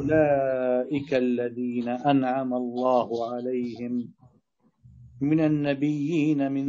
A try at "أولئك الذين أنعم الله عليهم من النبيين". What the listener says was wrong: لا لا لا لا لا لا لا لا لا تقطع هكذا الآية ما عندك علامة وقف والكلام متصل خذ نفس وادخل على الآية أولئك الذين أنعم الله عليهم من النبيين أرجع تاني من النبيين من ذرية آدم وممن حملنا مع نوح